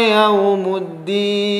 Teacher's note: yau jelas, u lebih kepada vokal u, wau sukun, yaumuddin waqaf maka nun menjadi sukun.